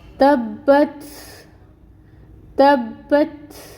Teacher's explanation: اور یہ تا کیونکہ ساکن ہے تو اس میں ہمس آئے گی